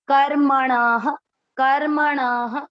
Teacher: क आधा रखकर म पूरा, कर्म अण, कर्मण। शब्द पूरा होने के बाद ण में अ की मात्रा, तो विसर्ग को पढ़ेंगे ह